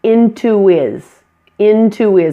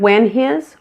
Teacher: we delete the H sound when it combines to other words. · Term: disappearing H